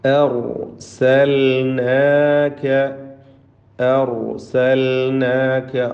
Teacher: ലാമിന് ഇൽഹാറാണ്, ലാമിനെ വെളിവാക്കണം എന്നത് പ്രത്യേകം ശ്രദ്ധിക്കുക. നൂനിൻ്റെ മുമ്പിൽ ലാം അവ്യക്തമായി പോകരുത്. രണ്ടും ലിസാനിയായ അക്ഷരങ്ങളാണ്.